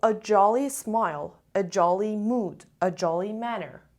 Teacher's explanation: 2 syllables and the stress is on the first syllable.